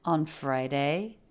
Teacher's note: the pitch goes up at the end. She's asking a yes/no question.